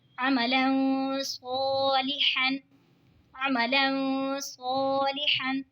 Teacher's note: دو زبر کی تنوین کے بعد حروف اقفا کا صاد آ رہا ہے تو اقفا ہوگا یعنی گنہ کر کے پڑھیں گے